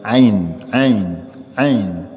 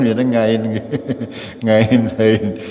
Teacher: tidak tepat makhrajnya ya bukan nga seperti ngingu ya akan tapi berada dalam tenggorokan